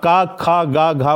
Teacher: क ख ग घ बोलेंगे कंठ से उच्चारण होगा